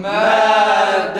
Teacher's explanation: Sesi tam kesiyoruz sonra tay okuyoruz. Madamet. Yalnız fazla durmuyoruz.